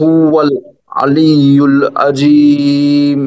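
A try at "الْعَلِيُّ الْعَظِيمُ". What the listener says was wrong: হ্যাঁ, আলিউল আজিম, আইনের উচ্চারণটা কিন্তু আপনাদের ফিকিরে হয় না, একটু খেয়াল করে আইনটা কিন্তু গলার মাঝখান থেকে উচ্চারণ করতে হবে। হ্যাঁ, আলিউল আজিম, এখানে চার আলিফ টেনে নিলে সুন্দর হবে।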